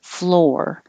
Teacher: your tongue curls back, and you're holding your tongue curled back to make the R noise a little longer so that it can be heard